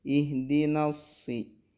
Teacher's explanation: Ketika kita mau menebalkan huruf sod, ini tidak boleh ditebalkannya dari na. Na harus tetap dibaca tipis, baru tebalnya baru ketika sudah masuk ke sod.